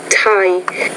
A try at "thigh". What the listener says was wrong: Not tie, it's thigh. So you're focusing in lesson 24 on the interdental consonants. So this one, it looks like when the TH is in the beginning of the word, that's where you're having more trouble. So thigh, thy, through, though.